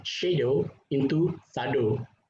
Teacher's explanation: palato-alveolar sh, sometimes it's pronounced as s. For example, actually there are some respondents who pronounce the word shadow into sado.